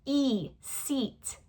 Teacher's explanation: Two completely different vowel sounds. The e is made with our tongue raised and our lips wide and stretched.